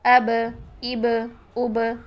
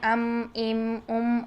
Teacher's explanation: با کو ساکن حالت میں با کی آواز کو ہلاتے ہیں، جبکہ میم ساکن کو نہیں ہلاتے ہیں. میم کی آواز کو ساکن حالت میں نہیں ہلانا، جبکہ با کی آواز کو ساکن حالت میں ہلا دیتے ہیں.